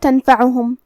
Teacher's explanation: فا حروف الاخفاء میں سے ہے اور اخفاء کا معنی ہے چھپا دینا، تو ہم یہاں نون ساکن کو چھپائیں گے اور غنہ کے ساتھ یہ حکم کو ادا کریں گے